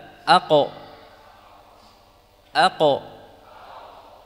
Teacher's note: dari pangkal lidah bertemu dengan langit-langit yang lunak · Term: qaf